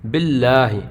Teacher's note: یہ باریک ہے کیونکہ لفظ اللہ کے نام سے پہلے زیر ہے۔